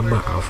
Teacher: vokal AA di sini berada pada suku kata yang berbeda, sehingga ini dapat kita artikan bahwa ini adalah deret fonem vokal.